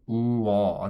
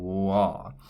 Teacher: And the way we make this is actually a combination of 2 vowels, and you can actually consider it as 1 vowel in itself, but you can also think of it as 2 vowels merged together. The 2 vowels merged together are actually this oo vowel and this aw vowel. And you could think of this, as I said, as 1 letter, but if you say oo-aw, that's sort of like saying wah. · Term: wo sound